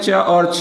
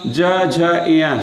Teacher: च और छ अघोष होगा ज झ य सघोष होगा